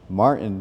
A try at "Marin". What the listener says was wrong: No. A lot of people see the invisible T there, though. I don't know how. No. Marin.